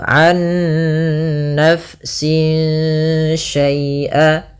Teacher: kita harus membacanya nunnya masukkan ke nun kedua dan disertai dengan gunnah. Nah, kesalahan yang terjadi tidak menahan gunnahnya an-nafsin langsung. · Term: idgham bi gunnah